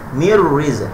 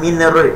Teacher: masukkan nun mati, nun terus huruf masuk ra